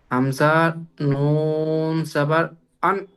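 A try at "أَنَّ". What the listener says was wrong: এখানে গুণনা করতে হবে, নুন তাসদিদ অজীব গুণনা। এই দেখেন নুন, নুন এসছে তার উপরে তাসদিদ। হামসা নুন সাবার আন, নুন সাবার না, আন্না। গুণনা, টান নয়, এটা টান বলে না। টান মানে হচ্ছে কি লম্বা করা, খেঁচা। আ, এটাকে টান বলা হয়। আর যখন আন, নাকের ভিতরে আওয়াজ আসবে ওটাকে গুণনা বলা হয়।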